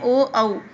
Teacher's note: कंठ और ओष्ठ से उच्चारित होने वाले वर्ण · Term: कंठौष्ठम